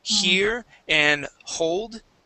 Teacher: Okay, especially an E sound and an O sound. You're adding an H to the beginning, saying here and hold.